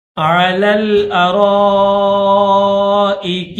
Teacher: علل، ٹھیک ہے، عین کے اوپر زبر ہے، پھر لام کے اوپر بھی زبر ہے، پھر اس لام کے بعد دوسرا لام ہے لام ساکن. اس لام زبر والے لام کو لام ساکن کے ساتھ ملا کر پڑھیں گے